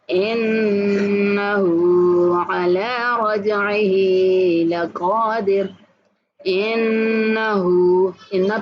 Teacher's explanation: انہ پہ غنہ کریں گے اور ہا کو کھینچ کے پڑھیں گے